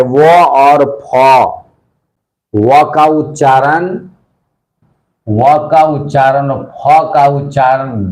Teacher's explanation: व और फ, ये दंतोष्ठ, दंत प्लस ओष्ठ।